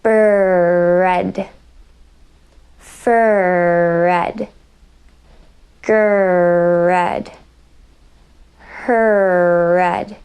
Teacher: you're just using that strong R in the word initial position to strengthen and shape the ER at the end of the word